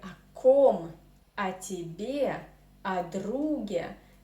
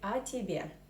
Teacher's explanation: when we pronounce these о тебе, we merge these two words in one word. So we say о тебе, not о тебе, and especially not о тебе.